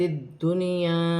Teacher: نون ساکن کے بعد اگر اسی کلمے میں یا آ جائے تو نون ساکن میں غنہ نہیں ہوگا